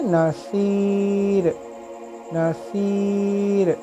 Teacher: آپ کے جو منہ ہے وہ سائڈ سے کھلے گا اور را کی آواز باریک ہوگی، منہ پورا ایمٹی ہوگا، ہوا نہیں بھریں گے ہم